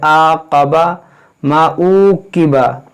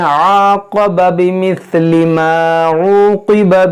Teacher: कैसे आक़बा मा उक़िबा, तो ये ऊ नहीं है, ये ऊ, ये आइन को वस्ते हल्क से अदा किया जाता है